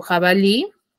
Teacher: las llamadas palabras agudas Ya ahora por ejemplo tengo jabalí que tiene la mayor fuerza de voz en la última sílaba y termina en vocal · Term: acento prosódico